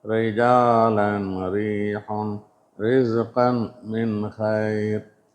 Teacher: ரா என்ற எழுத்து கஸ்ரா அல்லது கஸ்ரத்தைன் பெற்றிருந்தால் தர்கீக்காக மிருதுவாக ஓத வேண்டும்.